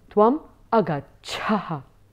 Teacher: Again, the attention drawn on the visarga, the aspirated sound.